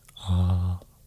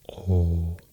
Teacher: the nasal versions of the vowels were lost, so then it became more of an O sound